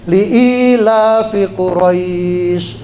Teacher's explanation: Dibaca waqaf pas ayat, nah dia berubah jadi panjang. Namanya madlin.